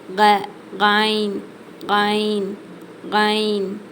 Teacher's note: இந்த எழுத்து மேல் தொண்டையிலிருந்து வெளியாகணும்